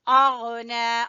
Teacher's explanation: لَهَبٍ وَتَبْ ما اغنا، کو نظر آ رہا ہے الف کے اوپر مد ہے، یہ بھی مد جائز ہے، کیونکہ یہ جب پہلے لفظ کے آخر میں حرف مدہ ہو اور دوسرے لفظ کے شروع میں حمزہ ہو تو مد جائز پیدا ہوتی ہے۔ تو یہ ہے مد جائز، اس کو کھینچیں گے 2.5 سے 3 الف کے برابر۔